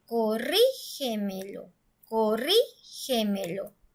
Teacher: la sílaba tónica suena clarito, suena muy fuerte en la sílaba antes de la antepenúltima sílaba, porque esa es la última, penúltima, antepenúltima, esta es la sílaba antes de la antepenúltima sílaba.